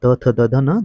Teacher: दंत से बोले जाते हैं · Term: त वर्ग